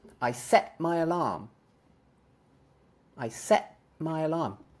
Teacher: I'm not making any T sound